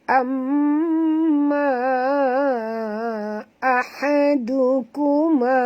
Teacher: Dukuma du jangan tebal dengan huruf dal ni sebut betul-betul kerana makhraj dal di hujung lidah